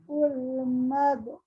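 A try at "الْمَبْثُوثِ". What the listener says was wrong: Bukan ul, sayang, al. Kalau alif lam, ini hamzah wasol namanya.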